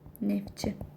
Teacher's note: Samit gəlsə t düşür.